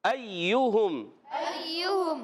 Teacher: حمزہ کو یا سے ملانا, یا مشدد ذرا رک کر ادا کرنا ہے اور یا میں یا کی آواز نہیں آنی چاہیے.